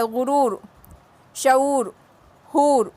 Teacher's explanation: دور میں دیکھو واو کی آواز دور او کی جیسی نکل رہی، دور او کی جیسی آواز نکلتی، تو یہ اور تھوڑا کھینچ کے پڑھتی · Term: واو معروف